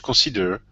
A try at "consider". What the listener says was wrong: The word is consider. Give me a short I instead of consider. Consider.